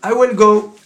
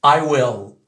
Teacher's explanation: Le L à la française, le bout de la langue va venir se coller au palais.